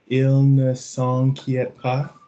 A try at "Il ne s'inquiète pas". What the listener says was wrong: You're dropping into on. It needs to stay an, rhyming with man or dan.